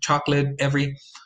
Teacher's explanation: you have the loss of unstressed medial vowels